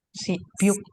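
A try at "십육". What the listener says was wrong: simyuk. Bacanya ya. Tulisannya sibyuk, tapi dibacanya simyuk. Pokoknya kalau ada biep ketemu sama yu, jadinya miem dan nyu. Oke, simnyuk. Nih, tadi simnyuk.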